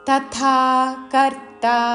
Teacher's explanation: ముందు అల్ప ప్రాణత తర్వాత మహాప్రాణ థా దీర్ఘముతో